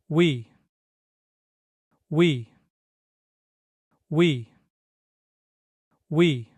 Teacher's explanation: Koreans pronounce it by smoothly moving from the U shape to the E shape